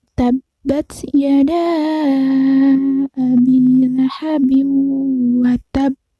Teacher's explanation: qalqalah kubro, itu ada tasydidnya sehingga dibaca lebih menekan